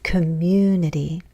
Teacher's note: we have falling intonation at the end